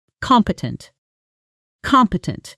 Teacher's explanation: Pronunciation: come, pay, tent. Stress on the first syllable.